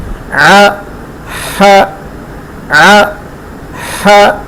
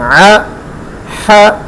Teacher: حلق سے ادا ہوتے ہیں، حلق کے درمیان والے حصے سے، ع ح ع ح، زبر کا ساؤنڈ آدھے سیکنڈ میں ادا کریں گے، جھٹکا نہیں دینا، لمبا نہیں کرنا، ع ح ع ح۔ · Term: وسط حلق